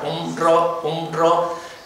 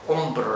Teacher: si lo hago muy rápido, no tengo tiempo de coordinarlo exactamente, y entonces me sale de refuerzo una B